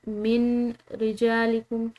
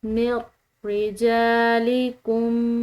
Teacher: جو یہ نون ساکن ہے یہ بالکل خاموش ہو جائے گی، اس کی آواز نہیں ہوگی، یعنی کہ میم کو غو کے ساتھ ملائیں گے، نون کو ختم، ایسے پڑھیں گے میر، ٹھیک ہے۔